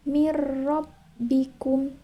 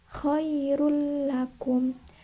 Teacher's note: dua yaitu ada lam dan ro cara membacanya Idam bilaunah adalah dengan memasukkan suara nun sukun atau tanwin sepenuhnya kepada huruf lam dan ro